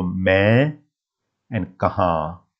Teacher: I have written an N at the end of these two words, but really there's no N at the end. It's a nasal sound coming through your nose